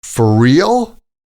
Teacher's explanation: The R sound of for combines with the R sound in real.